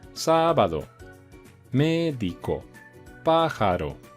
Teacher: las esdrújulas tienen la sílaba tónica en el antepenúltimo lugar